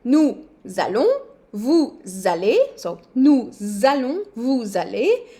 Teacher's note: You heard the small z for nous and vous. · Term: liaison